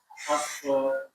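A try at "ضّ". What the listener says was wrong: ulangi lebih tebal lagi.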